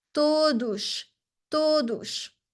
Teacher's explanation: The S in the end of the word is going to be a sh sound.